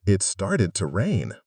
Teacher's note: In the first sentence, started to likely sounded like started a. The to becomes a very small, unstressed sound.